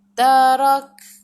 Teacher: Bila matikan kaf kena ada angin sedikit sahaja. Tarak. Jangan banyak.